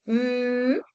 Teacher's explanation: el aire también se expulsa por la cavidad nasal, sonidos nasales